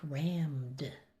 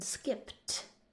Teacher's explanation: There's actually 4 possible sounds of ed. So ed can sound like d, think rammed. It could sound like t, as in skipped.